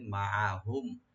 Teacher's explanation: আর মিম সাকিন এখানে জাহার স্বাভাবিক হবে, জাহার করব, এখানে গুন্না হবে না